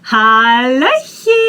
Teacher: I want to remind you that ch you pronounce as soft h